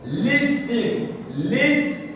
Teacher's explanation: L'appui se fait sur la première syllabe. On met seulement ING.